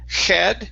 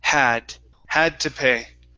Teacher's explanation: the h is really light it's like a breath